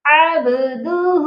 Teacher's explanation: اس کی با پر قلقلہ کرنا ہے کیونکہ با جو ہے حروف قلقلہ ہے